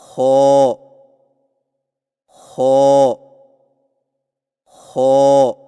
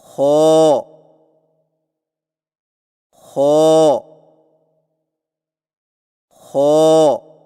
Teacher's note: خو کی ادائیگی میں زبان کی جڑ کو تالو کی طرف بلند کرتے ہوئے موٹی آواز میں پڑھیں، یعنی خو خو خو۔